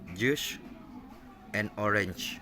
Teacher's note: the airflow is first stopped like a plosive, then released to produce friction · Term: affricate